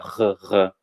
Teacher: o R do francês é sempre o que no português é o som de 2 R's, é o R lá na garganta · A gente tem que pensar que ele é sempre o som dos nossos 2 R's, né? Como se a gente estivesse fazendo um gargarejo. É lá na garganta.